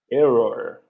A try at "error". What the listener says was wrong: So the ER at the end is like this. As if it were like that. Or. No, you're doing or.